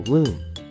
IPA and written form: ɡluːm (gloom)